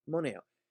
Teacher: The e sound remains, but it shortens because of a common rule in Latin. And that rule is that vowels before other vowels in Latin are short. · The sound of Latin e, is far enough away in the mouth from the o that it didn't get completely wiped out, right? The e sound remains, but it shortens because of a common rule in Latin.